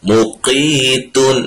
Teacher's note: اس کے دیکھیں اس چیز کا خیال رکھیں، یہ قاف موٹا ہے، اور اس کو جب ادا کرنا ہے تو اگلے حرف جو کہ تا ہے اس کو ہم باریک پڑھیں گے، اس کو بھی ساتھ موٹا نہیں کرنا ہے۔ مقیت نہیں، مقیت تا باریک۔